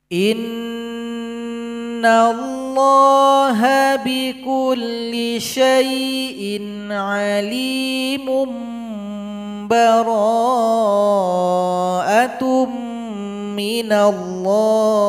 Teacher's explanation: Karena di situ ada tanwin berjumpa dengan ba, maka berikan iqlabnya. Alimun menjadi alimum ba. Nah, jadi didengungkan di situ.